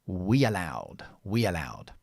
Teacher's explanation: And it's difficult when I go vowel to vowel. So here we put like a ghost consonant. And after the sound E, we use the Y.